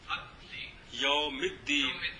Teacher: دال کے اوپر دال آ گیا، جی، تو لہذا لام کو لام کو دال کیا، پھر دال کا دال میں ادغام کیا تو بن گیا الدین